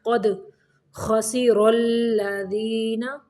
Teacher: خا کو موٹا پڑھیں گے، را کو بھی موٹا پڑھیں گے